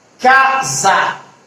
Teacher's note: O S a gente escuta, mas não com som de S, com som de Z.